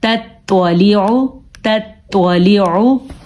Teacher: اب دیکھیں ہم نے تتوالیعو نہیں پڑھا کیونکہ تا کو ہم نے باریک پڑھنا اور توا کو پر پڑھنا ہے